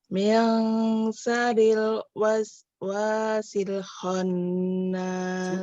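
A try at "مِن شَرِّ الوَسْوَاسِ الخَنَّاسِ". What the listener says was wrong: Min syar, huruf syar itu huruf shin ya. Min syarril waswasil khannas.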